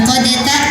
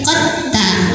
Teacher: Nah maka kalau dal sukun ketemu ta, dibacanya idgham itu masuk. Artinya dalnya kita lewat aja, udah nggak ada pantulan, langsung ke ta sambil tekan